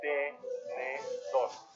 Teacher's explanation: la sílaba tónica es tor, porque tiene mayor intensidad, y es una palabra aguda, porque la sílaba tónica es la última de la palabra.